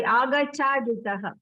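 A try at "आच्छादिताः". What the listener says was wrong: Where is Gakara? I don't see. Huge difference. You see, achaditaha.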